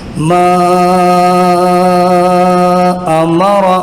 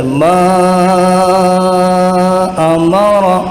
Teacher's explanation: مد منفصل کو کم سے کم 3 الف کے برابر کھینچ کر پڑھنا ہے